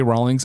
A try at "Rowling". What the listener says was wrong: Rolling. Rolling. You kind of said rolling.